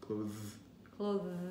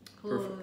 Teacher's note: So instead of blowing air, you're making the humming sound, so the voiced dental fricative.